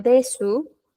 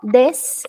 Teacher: esta u pierde fuerza